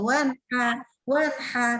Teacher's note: Nah, huruf H-nya dijaga tipisnya. Nah, jadi jangan jadi ikutan tebal, nggak boleh jadi wanhar.